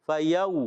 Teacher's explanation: یا واو زبر یو، یا ساکن سے واو ساکن سے پہلے زبر آ گیا، واو ساکن سے پہلے زبر آئے تو واو لین ہوتا ہے، نرمی سے ادا کریں گے